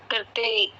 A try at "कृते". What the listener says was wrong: फिर भी करते ही बोल रहे। आपको कृते बोलना नहीं आता? कृते। क्री है, क्री। ये क्रय नहीं है।